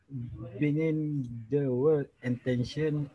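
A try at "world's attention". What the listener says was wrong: Izzah perasan yang suka tidak sebut S pada penghujung.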